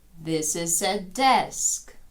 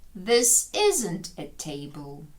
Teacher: в ствердженні у нас удар падає на назву предмета